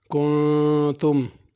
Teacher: کن کی نون پہ غنہ ہوگا، کنتم میم پہ بھی غنہ ہوگا